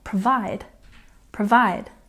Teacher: And number 92 is provide. We put a stress on the second syllable